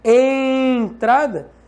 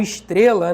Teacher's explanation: o E é nasal em entrada e oral em estrela.